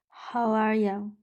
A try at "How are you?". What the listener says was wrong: Don't shut your mouth. Okay, don't shut your mouth. So it's like this. How are you?